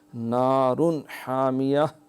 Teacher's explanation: یہاں پہ پھر اظہار اور ہا حلق سے ادا کرنا ہے